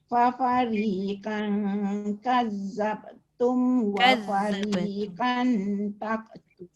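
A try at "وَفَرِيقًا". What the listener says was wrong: Tebalkan wa fariqan qan. Datuk dia kena cuba banyakkan sebutan isti'la. Huruf isti'la yang tebal tu kebanyakannya jadi nipis bila dia jadi ayat kan.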